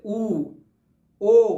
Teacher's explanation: जिन स्वरों का उच्चारण करने में हमारे जो मुख्य जो होठ होते हैं वो क्या हो जाए, गोल हो जाए, जैसे ऊ, ओ, तो ये स्वर कहाँ आएंगे, वृत्त में आएंगे।